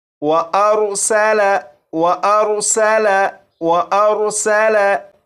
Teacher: और इस लफ्ज़ में सीन है, सीन को सीटी की आवाज़ के साथ पढ़ेंगे